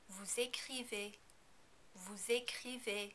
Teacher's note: In the vous form, you also need to pronounce the final S because écrivez begins with a vowel. Also, remember that the EZ combination is pronounced as A.